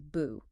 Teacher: so bu changes to a second tone, a rising tone